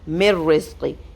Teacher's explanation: Complete ادغام نون ساکن کے بعد را، تو یہاں پہ نون ہم بالکل نہیں پڑھیں گے، میم کو ڈائریکٹ را کے ساتھ ملا دیں گے.